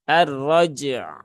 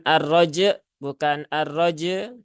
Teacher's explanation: Ya harus disuarakan huruf ainnya. Jadi tunaikan dulu syiddah dari huruf jim, kemudian kolkolahnya juga. Setelah itu tunaikan tawasud dari huruf ain ya.